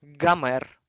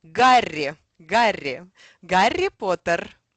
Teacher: It's quite funny because the Russian sound, the English sound H will be rendered as G